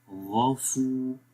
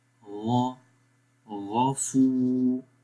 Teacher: واو کے اوپر جزم ہے، سکون سائن ہے اور اس سے پہلے پیش ہے تو 1 سیکنڈ لمبا کریں گے. غافو، غین کو موٹا پڑھیں گے اور سب سے گلے کے اوپر والے حصے سے پڑھیں گے